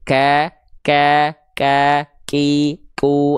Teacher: sedikit percikan nafas, bukan percikan nafas yang lebai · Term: huruf kaf